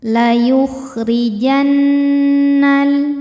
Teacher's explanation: Cara membacanya berdengung, tahan dengungannya kurang lebih 2 harokat. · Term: gunnah musyaddadah